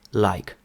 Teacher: Вони завжди вимовляють звук л досить м'яко